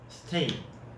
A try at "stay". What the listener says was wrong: 스테이가 안 되는 거. 스가 안 되는 거.